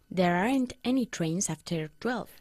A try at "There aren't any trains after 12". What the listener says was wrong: ¿Cómo se pronuncia la contracción de are not? Aren't, como todos los españoles. No se hace así. Aren't, ¿ok? Una sola sílaba. Aren't, como mi tía. Aren't.